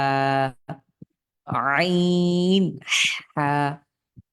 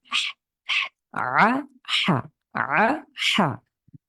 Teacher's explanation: এই হা কণ্ঠের মাঝখান থেকে চাপ দিয়ে